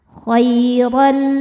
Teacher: Khairal selanjutnya ada hukum idgham bila gunnah karena ada tanwin fathah menghadapi huruf lam. Maka tanwin tidak dibaca n lagi melainkan langsung baca lam, lebur, tapi tidak ditahan, tidak dengung.